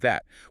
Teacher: sticking the tongue between the teeth, creating that friction